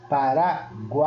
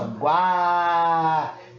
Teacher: Eu nem utilizo muito U e nem utilizo muito I. Porque essa pronúncia eu utilizo muito o A nessa sílaba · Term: tritongo